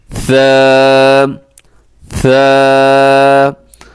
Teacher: آپ نے کوشش کرنی ہے کہ ثا میں سیٹی نہ ہو، اور اس کا طریقہ یہ ہوتا ہے کہ آپ اس میں تھوڑا سا زبان جو ہے وہ دونوں دانتوں کے درمیان میں لے کے آئے تو سیٹی اس میں ختم ہو جائے گی